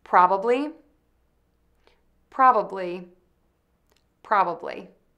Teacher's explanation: End with Li by touching the tip of your tongue to the back of your top teeth, then move to a smile for the long E. · First, start by saying the PR combination by putting your lips together, then rounding them for the R. Next, add the short ah sound by opening your mouth wide. Do not pucker and say oh. It is an open ah. Then, add the syllable bub by pressing the lips together for the B, adding the short relaxed uh vowel, then closing the lips again for the B.